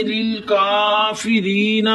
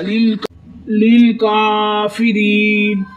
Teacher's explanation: لیل کافری، نون کے اوپر زبر ہے، نا بغیر کھینچے پڑھیں گے، لیل کافری نا، مگر ہم ادھر وقف کریں گے، وقف کی صورت میں نون ساکن ہو جائے گا اور نون کا زبر ختم ہو جائے گا